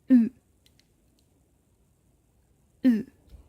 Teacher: Para pronunciar esta vocal vamos a posicionar nuestra lengua como si fuéramos a decir una I, pero redondeamos los labios como si fuéramos a pronunciar una U. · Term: U francesa